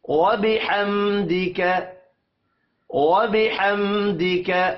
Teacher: میم ساکن کے بعد دال آ رہا ہے، اظہار شفی ہوگا، یہاں پر غنہ نہیں کریں گے